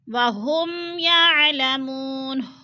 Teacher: ہم پہ پھر اظہار شفوی، یعنی ناک میں آواز نہیں لے کر جائیں گے، ظاہر کے کر کے لفظ کو پڑھیں گے۔